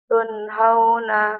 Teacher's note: لدي نون ساكنة مظهرة قبل الهاء المفتوحة